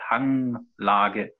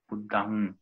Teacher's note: das wäre eigentlich ein M mit einem Punkt und ist dann ein stimmhaftes, ein nasaliertes M